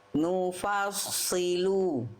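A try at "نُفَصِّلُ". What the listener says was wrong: Nufalnya jangan ke bawah tebal. Yang tebal sadnya aja juga nufa.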